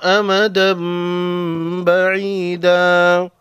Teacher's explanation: تنوین کے بعد با ہے، تنوین کے نون کو میم میں بدل کر غنہ کے ساتھ پڑھیں گے، اس کو اقلاب کہتے ہیں۔